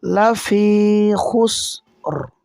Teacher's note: ওয়াকফের কারণে রও সাকিন হবে আর র পুর হবে মোটা হবে